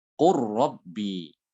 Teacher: lamnya itu dia diidghamkan ke ro